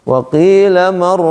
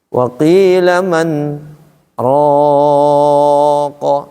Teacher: Ketika dia saktah, maka bunyinya nun. Nggak boleh dia ro langsung.